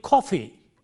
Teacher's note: When you say coffee, the K is aspirated, K. It is not coffee, but coffee, K.